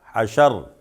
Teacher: وقف کریں گے تو را ساکن ہے، اس سے پہلے زبر ہے تب بھی موٹا پڑھیں گے